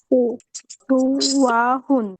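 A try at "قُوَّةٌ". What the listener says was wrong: কৌয়াতুন। কফ এখানে কফ। কৌয়াতুন।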